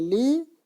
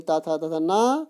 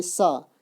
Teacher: ता वर्ग यानी ता था तथा ना, लकार यानी ला और शकार यानी सा, इनका उच्चार स्थान दंत है